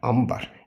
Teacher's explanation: N M səsi kimi tələffüz edilir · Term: N M kimi